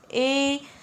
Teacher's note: ए तथा आई के उच्चारण में कंठ तथा तालु दोनों का सहयोग लिया जाता है, ठीक है। ए और आई है वो कंठ और तालु दोनों से उच्चारित किया जाता है। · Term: कंठ तालु